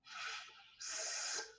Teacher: when we restrict the flow of air as in s, producing a chaotic, noisy sound